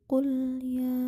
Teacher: Terdapat hukum bacaan mad jaiz munfasil. Cara membacanya dibaca panjang 2-5 harokat.